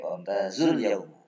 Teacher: karena setelah huruf mat ada huruf yang disukun, maka pendek